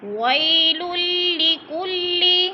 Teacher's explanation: ویل لکل، وی پہ وولین ہے، اس کو لمبا بھی نہیں کرنا اور جھٹکا بھی نہیں دینا۔ ویل لکل، لام مشدد ہے، سختی سے پڑھنا ہے کیونکہ ادھر ادغام ہو رہا ہے